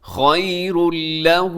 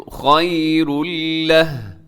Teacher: خَيْرًا فَهُوَ خَيْرٌ لَهُ، خیر اللہ، یہاں خیرن پہ تنوین ہے اور آگے لام ہے، تنوین کے بعد لام حروف یرملون کا یہاں پہ ادغام ہوگا، اور یہ ادغام بغیر غنّے کے ہوگا۔